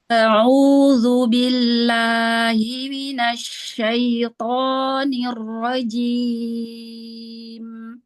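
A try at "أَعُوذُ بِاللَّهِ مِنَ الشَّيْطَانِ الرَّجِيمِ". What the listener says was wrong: Ya, Hamzah di awal ringankan lagi. A'udzu, a'udzu.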